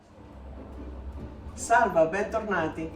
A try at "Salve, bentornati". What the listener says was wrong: Salva? No, you said salva.